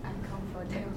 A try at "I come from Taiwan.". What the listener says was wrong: 可是 M， 所以 Taiwan has an N. I come from Taiwan.